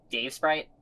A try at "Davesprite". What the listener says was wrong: No, I mean, why do you always say it like that, with the space between words? It's not Dave Sprite, it's Dave Sprite.